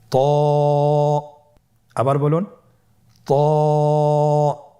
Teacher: ত এর মাখরাজ কোন জায়গা থেকে আপনারা স্ক্রিনে দেখতে পাচ্ছেন। জিহ্বার আগা, সামনের উপরের 2 দাঁতের গোড়ার সঙ্গে লাগিয়ে উচ্চারিত হয়।